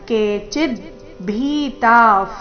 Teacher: ಭೀತ ಎರಡು ದೀರ್ಘ ಭೀ ಮಹಾಪ್ರಾಣ ದೀರ್ಘ ತ ದೀರ್ಘ